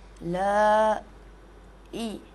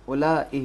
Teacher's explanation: زبر کے بعد الف ہے, اسے ضرور کھینچنا ہوگا. دو زبر کے برابر, دو زبر کے مقدار میں کھینچنا ہوگا